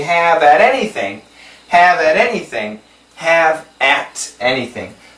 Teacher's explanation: it's a flat T sound which sounds like a D